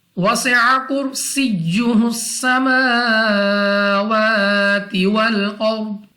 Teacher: First we have seen here, and then we have again seen here. So read seen by whistling sound everywhere